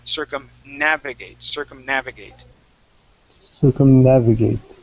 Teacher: when we say circumnavigate, okay, we're going to add the accent right after the N. So we're going to say circumnavigate, circumnavigate.